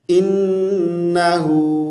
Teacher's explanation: انہو کو انہو اے کے ساتھ نہیں پڑھنا، ای کے ساتھ، اے بی سی ڈی ای، ای کی ساؤنڈ جیسی ساؤنڈ ہے.